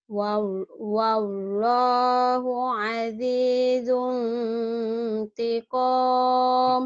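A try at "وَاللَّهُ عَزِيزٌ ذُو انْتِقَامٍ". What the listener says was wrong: Ketinggalan atuh zungnya. Azizung dong. Ada azizung dzuntiqam. Ada dalnya ketinggalan.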